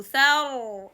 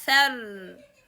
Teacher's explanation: if Ra Sukun preceded by Fatha, in this case, this Ra will be heavy sound